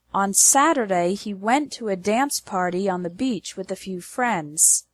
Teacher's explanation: the stress is on the words Saturday went dance party Beach and friends